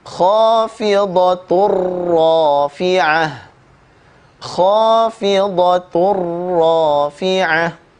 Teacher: Tanwin bertemu dengan huruf ra, diidghamkan, dimasukkan bunyi tanwin kepada huruf ra ya, tanpa gunnah.